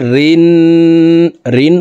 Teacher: তাসদিদওয়ালা নুনের সাথে 3 সেকেন্ড পরিমাণ গুন্নাহ করে ধরে রেখে পড়ব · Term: ওয়াজিব গুন্না